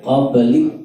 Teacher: Nah, tidak perlu karena ini hanya menunjukkan bahwa ada aliran ketika mulutnya setelah disukun itu membuka